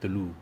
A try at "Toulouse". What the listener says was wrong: No, if there's a vowel at the end, you pronounce the S. Pag may vowel sa dulo.